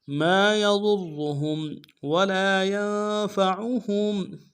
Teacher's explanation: کے ساتھ الف مدہ ہے ایک اسم دال میں کھینچیں گے، یا کو نون کے ساتھ ملانا ہے، نون ساکن غنہ کریں گے ، فا کو نون سے ادا کریں گے، عین کو موٹا